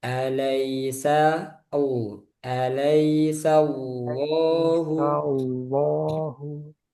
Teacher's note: laful jalal Allah tebal karena sebelumnya fathah